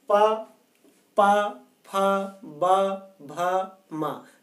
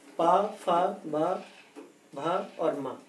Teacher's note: ओठ, जो हमारे ओंठ हैं, दोनों ओंठ, मुख के जो ओंठ हैं, जब प्राणवायु बाहर आती है तो ओंठ दोनों बंद हो जाते हैं, स्पर्श करते हैं यानी टच करते हैं, वायु का अवरोध यानी रुकावट होती है और वहां से फिर स्पर्श करते हुए वायु बाहर आती है। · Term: ओष्ठ वर्ण